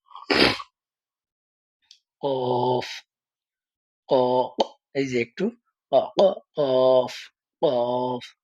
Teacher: লাগায় বলেন ফা ফা ফা এরপরে হচ্ছে যে হরফটা কফ এটার উচ্চারণ আমরা প্রথমে মাখরাজ জেনে নেই যে কোন জায়গা থেকে হবে জিহবার গোড়া জিবার গোড়ার বরাবর তারপর জিবার গোড়া এখানে হবে জিবার গোড়া তার বরাবর উপরের তালুর সঙ্গে লাগিয়ে পড়তে হবে